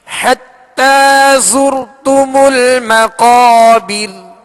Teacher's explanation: ہم نے زا کو سختی کے ساتھ پڑھنا ہے، سیٹی کی آواز میں پڑھنا ہے، اس کو نرمی کے ساتھ نہیں پڑھنا